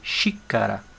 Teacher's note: xícara, a sílaba tônica é o xi